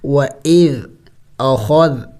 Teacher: ذال کے اوپر سکون ہے اور ذال نرم حروف میں سے ہے نرم پڑھیں گے